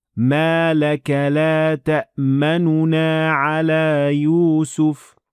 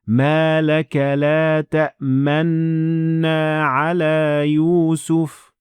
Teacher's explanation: نون کو ادا کیے بغیر صرف ہونٹوں کو نون کی شکل میں رکھنا